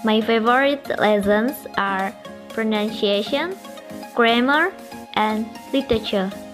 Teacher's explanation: combination of falling intonation and rising intonation. It's usually used for giving information about list of items. For the example is, "My favorite lessons are pronunciation, grammar, and literature." Rising, and falling intonation.